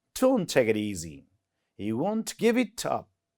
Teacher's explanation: easy is emphasized, and give is emphasized, and it creates a rhythm